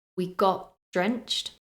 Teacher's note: I dropped the t at the end of got.